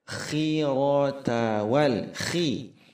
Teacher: Ketika huruf kha kasrah maka tebalnya berkurang, harus dibaca khi datar, jangan dibaca khui, kurang tepat.